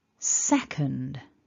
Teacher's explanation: syllable or rather the word is divided into two syllables so repeat after me stressing that first syllable make it stronger · the first syllable is the strongest, the stressed syllable, and then we've got a blue dot in the middle that shows us the syllable, or rather the word, is divided into two syllables.